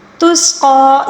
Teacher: تسقی، سین کی سیٹی قاف کو بھی پر پڑھیں گے اور اوپر جو کھڑا زبر ہے اس کو بھی کھینچ کر پڑھیں گے